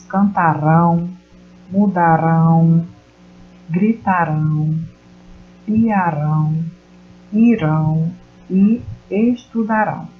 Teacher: a última sílaba é pronunciada com mais intensidade, com mais força. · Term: oxítonas